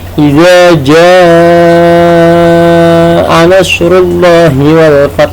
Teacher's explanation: janya itu panjangnya 5 harokat atau 2,5 alif dalam kaidah tajwid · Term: mad wajib